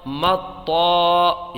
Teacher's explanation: طا الف زبر طا، مطا، یہاں پر دیکھیں الف مدہ ہوگا، الف سے پہلے حرف پر یہ زبر ہے تو ایک الف کھینچ کے پڑھیں گے